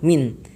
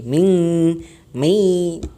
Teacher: Non matinya benar-benar berbunyi non mati, tidak seperti ming, mei, tidak seperti itu, tapi jelas-jelas non matinya.